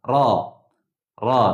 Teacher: Ra ni lidah getaran kat langit sikit ra macam tu. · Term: huruf ra